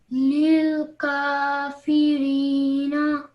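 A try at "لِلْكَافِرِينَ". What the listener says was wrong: Just make sure not to elongate the na sound at the end. Just keep it simple for 1 second. Lil kafirina.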